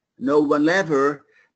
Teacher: in this case you link the L and ever